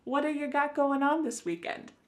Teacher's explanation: that T at the end of the word what is going to change to a D sound. This is really typical of American English where a T that's surrounded by vowel sounds is going to change to a D. It's called a flapped T and it just kind of uh rolls off your tongue in a smooth way.